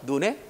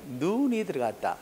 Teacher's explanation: 사람 눈은 짧게 내리는 눈은 길게